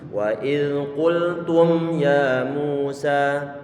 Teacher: Di saat kita mengucapkan qultum ya Musa, ini hidung kita ini pasti bergetar ini di saat pas mengucapkan huruf mimnya. · Getaran yang di hidung di saat mengucapkan qultum walaupun toh dia itu izhar, itulah yang disebut sebagai gunnah dan gak mungkin dihilangkan dari huruf mim ataupun huruf nun.